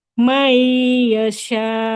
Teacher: ini huruf syin ya, bukan sa enggak boleh sa